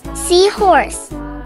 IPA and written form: ˈsiːhɔːrs (Seahorse)